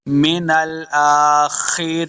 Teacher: خا حروف مستعلیہ سے اس کو موٹا پڑھیں گے۔ من الآخرین، را زیجا ری، اس کو 2 حرکات لمع کرنا ہے، یا مدہ ہے، آخر پہ نون ساکن کریں گے وقف کرنے کی صورت میں۔